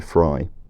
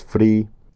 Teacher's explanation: It would have gone into Middle English as fri, and the great vowel shift would have broken the long vowel to the modern price vowel